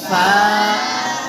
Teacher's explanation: নিচের ঠোঁটের পেট, সামনের উপরের দুই দাঁতের আগার সঙ্গে লাগে।